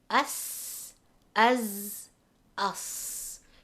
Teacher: So you can hear the whistling and the buzzing sound. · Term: Safir